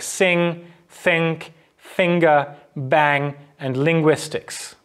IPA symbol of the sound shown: ŋ